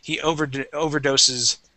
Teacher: that's still a voiced S at the very end with an ES